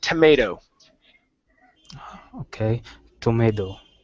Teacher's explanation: We take the last T and we switch it to a flap T.